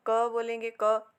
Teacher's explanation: ठीक है, जैसे हमने घोष में पढ़ा था ग ग, हम ग कहेंगे तो हल्का सा कंपन होगा, हमें हमारे मुंह में हमें फील होगा ये हल्का सा कंपन जब हम ग बोलेंगे। ठीक है, और अगर हम क बोलेंगे, क, इसमें कोई भी कंपन नहीं होगा हमारे मुंह में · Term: अघोष